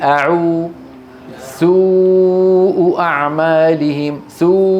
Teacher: بينما الواو أيضا ينشأ صوتها من الوترين، ولكن يمر على الفم، والفم متشكل بهذا الشكل، أقصى اللسان مرتفع، والشفتان مضمومتان إلى الأمام